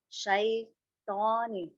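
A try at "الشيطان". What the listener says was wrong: Bukan saitoni, tapi syai. Nah, jadi syai bukan shoy. Jangan tutup mulut tak.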